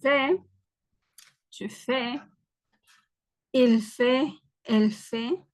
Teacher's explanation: la consonante final no se pronuncia, ni la S ni la T